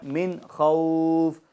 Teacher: نون ساکن اور تنوین میں اظہار ہوگا, یعنی گنہ نہیں کریں گے